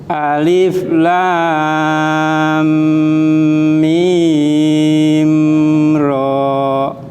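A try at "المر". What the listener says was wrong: Mimnya kurang panjang. Mim ra.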